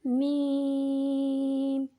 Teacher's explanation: میم کو 3 الف کے بقدر کھینچ کر پڑھیں گے